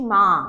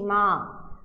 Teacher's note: একটু উদাহরণ দেখো, আমি বলছি মা, একবারে উচ্চারণ করছি মা। আমার বাকযন্ত্রের কোথাও কিন্তু বাধাপ্রাপ্ত হচ্ছে না, কষ্ট হচ্ছে না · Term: অক্ষর